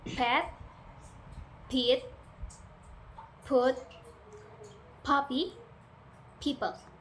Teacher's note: Your lips come together and release a burst of air without using your vocal cords.